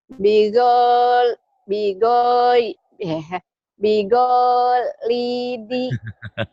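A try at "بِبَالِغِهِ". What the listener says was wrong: Bukan. Go-nya yang panjang dari mana, Umi? Ayo. Kenapa bigo? Ini bukan alif ini. Ini lamnya ada barisnya. Yang panjang nih lam. Bigoliri gitu, Mi. Bigo.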